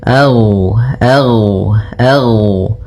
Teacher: sifat rakhawah, yang di mana suaranya mengalir